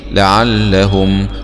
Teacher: ميم سكون مع الإظهار الشفوي